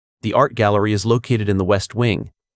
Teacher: Focus on a clear falling intonation at the end of the sentence and pronounce the ed and located distinctly.